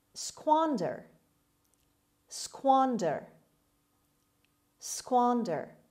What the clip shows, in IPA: ˈskwɑːndər